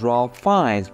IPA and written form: reɪf ˈfaɪnz (Ralph Fiennes)